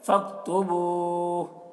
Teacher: فَاكْتُبُوهُ، یہاں پر علامت ہے تو، یہاں پر ٹھہر جانا چاہیے، جب ٹھہریں گے تو ہا کا جو پیش ہے وہ سکون سے بدل جائے گا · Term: سکون عارضی